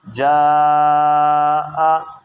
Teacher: آپ نے مد کو 4 یا 5 حرکات کے برابر کھینچ کر پڑھنا ہے